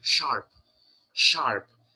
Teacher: When we say sharp, you roll the tongue a little bit, right?